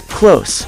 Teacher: if you're referring to the adjective close like we are close to each other pronounce it with an s at the end